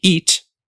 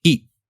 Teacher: freezing your tongue in that T position at the end of the word this is an unreleased T